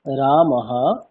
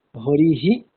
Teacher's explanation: বিসর্গের উচ্চারণ হকারের মতো হবে, যেমন রামহা, এখানে উচ্চারণটি হবে রামহা, অর্থাৎ যে বর্ণের পরে বিসর্গ থাকে, বিসর্গ স্থানে হকার বসিয়ে হকারের পরে সেই স্বরবর্ণটি যুক্ত করে উচ্চারণ করতে হবে